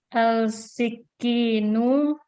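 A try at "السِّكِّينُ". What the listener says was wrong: Baik, ini syamsiyah. Ini syamsiyah, makanya kita bacanya langsung as.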